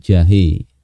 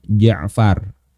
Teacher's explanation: Pakai huruf jim ya. Jim itu makhrajnya di tengah lidah, bukan di ujung lidah.